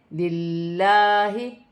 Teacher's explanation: لام مشدد ہے، لام مشدد سے پہلے زیر ہے تو لام باریک پڑھی جائے گی